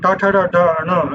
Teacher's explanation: Now in the third one, ta, ta, da, da, na, these are called retroflexes, because you can easily feel when you pronounce it. When you say ta, you're actually sticking your tongue out a little bit and folding it backwards, right? That is called retroflex, that is bending backwards. Therefore, they are called retroflexes.